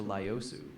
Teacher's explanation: in the original Japanese it's pronounced closer to lossu with a long o sound. In English, people often just simplify it to liios or leos.